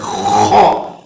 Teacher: خا کو تھوڑا ہونٹوں کو گول کر کے کیا ہے حلق سے آواز نکلنا ہے، خا۔ اس میں اور ایک دوسرا حروف آتا ہے قوف، ان دونوں کے بیچ میں فرق بھی ہونا ہے، تو اس وجہ سے اس کی جو آواز ہے وہ خا اس طرح نکلے گی۔